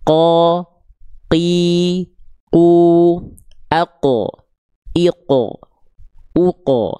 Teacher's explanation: kalau teman-teman melafalkan huruf qof masih ada becek-becek nafasnya. Ko, k, maka itu huruf kaf.